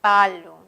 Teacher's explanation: los oclusivos presentan una obstrucción total, como en el caso de palo